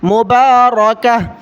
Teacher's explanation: یہاں پر ہم نے سانس لینے کے لیے وقف کیا ہے اس لیے گول تا پر ہا پڑھ رہے ہیں